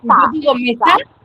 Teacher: En la me. Tengo la mayor fuerza de voz en me. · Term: palabra grave